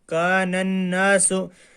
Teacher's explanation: نون حروف شمسی میں سے ہے اس لیے اس کو پہلے والے نون کے ساتھ ملائیں گے، الف لام نہیں پڑھیں گے